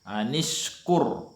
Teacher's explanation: Ini juga ra-nya ra tafkhim, karena ra yang disukun tapi huruf sebelumnya berharakah dhammah, maka agak tebal